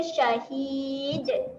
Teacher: huruf dal ni huruf yang ada lantunan. Ketika mati, lantunkan sedikit bunyi dia.